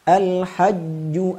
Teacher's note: ketika huruf Jim bertasdid Jangan Sampai lembek ketika mentasdidkannya